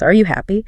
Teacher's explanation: >> Rising intonation. Voice goes up at the end.